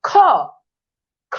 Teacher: খ যখন উচ্চারণ করেন তখন বাতাসের প্রবণতা বেশি, এর জন্য খ মহাপ্রাণ।